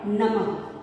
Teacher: जब हम इसका उच्चारण करते हैं तो ह की ध्वनि हमें सुनाई देती है। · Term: विसर्ग